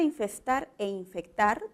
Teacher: el fonema fricativo s que ha cambiado con el fonema oclusivo K